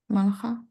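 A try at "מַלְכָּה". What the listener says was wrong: Okay, now careful where you put the stress. Right now, the stress is here.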